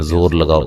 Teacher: اس میں زو کی جو زا ہوتی ہے شروع میں، اور سیٹی کے ساتھ اس کو ادا کرنا ہے